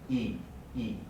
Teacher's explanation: You can see my mask goes ah, e, right? Because the e sound is created by raising the tongue high in the mouth. Not only high, but also towards the front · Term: high front vowel